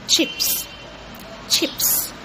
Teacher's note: It's voiceless sound, and I'm starting with pronouncing the t sound and then going through the other sound which is sh sound. So it's ch.